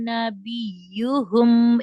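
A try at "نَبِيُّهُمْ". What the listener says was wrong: Nabiyun. Domanya lagi, bukan you.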